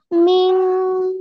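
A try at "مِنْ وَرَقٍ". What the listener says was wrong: মিউ। না, মিন পড়া যাবে না । ওয়াও আসছে না, ঈদগামের হরফ গুণনা করে পড়তে হবে। মিউ ওয়ারাকি।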